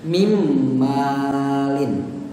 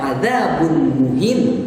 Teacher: Nun mati bertemu dengan mim seolah-olah nunnya hilang. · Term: idgham bi gunnah